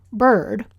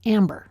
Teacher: The only place this vowel shows up in Canadian English is when it's rhotic, that is, in a stressed syllable with an R in the coda. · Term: mid-central unreduced vowel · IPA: ɜ